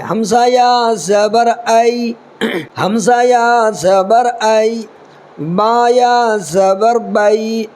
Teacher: یا ساکن حرف لین آواز معروف ہو، نرمی سے جلد ادا کی جائے